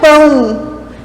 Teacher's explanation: esse nosso som mais fraco é esse O que está fazendo quase um som de U ali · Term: ditongo decrescente